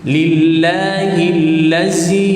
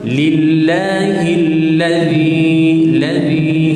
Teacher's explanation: Dia membaca dengan zai yang panjang tu, macam bentuk cili tu kan, bentuk ra tapi ada titik zai. Kalau yang besar zai, maka banyak getaran dia. Tetapi di sini zal yang kecil sangat sedikit dan nipis.